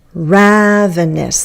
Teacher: Ravenous. The first one is going to be stressed.